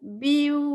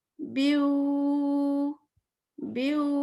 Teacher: واؤ کو 2 حرکت کھینچنا ہے